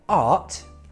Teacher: So a word like art, we don't pronounce the R, it's quite soft, art. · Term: non-rhotic accent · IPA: /ɑ:t/